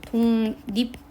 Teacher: 기역은 이응으로 바뀌고 리을은 니은으로 바뀌었어요. 비음이 없는데 기역도 리을도 둘 다 비음이 아닌데 둘 다 비음이 된 거잖아요. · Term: 비음화